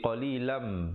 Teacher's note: Illa qalilam, di situ idgham bi gunnah, tanwin bertemu mim. Asalnya qalilan, tapi bila bertemu mim jadi qalilam dengan kadar panjang 2 harakat